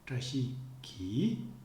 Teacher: it is the intonation of the ki particle that becomes the strongest